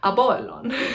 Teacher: So when an English speaker says P, that actually sounds to an ancient Greek speaker like this letter that's called phi. So the letter that's called pi is actually, it shouldn't have a puff of air after it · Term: unaspirated P sound